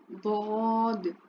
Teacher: ज़बान की करवट जब ऊपर की दाढ़ों की जड़ों से लगती है ना तो दौद अदा होता है, तो इसको मखरज के एतबार से कहते हैं हाफिया।